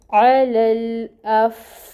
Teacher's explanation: علل، پھر الف ہے اور الف کے اوپر آپ دیکھ رہے ہیں فتحہ ہے، تو فا جو ہے وہ آگے ساکن آ رہی ہے، فا میں ہمس ہوتی ہے، فا میں ہمس آئے گی